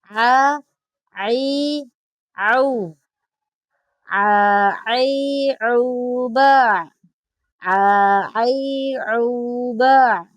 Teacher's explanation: huruf ain ini kita perlu perjelas karena makhrajil hurufnya ini ada di tengah tenggorokan atau disebut wasatulq